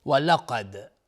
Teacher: ولقد قاف از حروف استعلاست و دال اینجا قلقله میخواد چون ساکنه